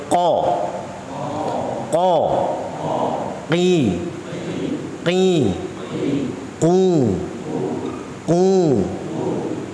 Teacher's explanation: aqsal lisani fauqu pangkal lidah atas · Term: huruf qof